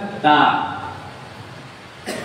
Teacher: dal dan ta keluar dari ujung lidah yang ditempelkan di pangkal gigi dari atas. Berarti ujung lidah kita kalau pas menempel di pertemuan gigi dan gusi, gigis dari atas, maka akan terucap ta.